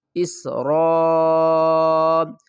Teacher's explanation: یا بنی، حمزہ کو سین سے ملائیں گے اور سیٹی کی آواز آئے گی۔ اس را الف مد زبر را، 5 الف کی مقدار کھینچ کر پڑھیں گے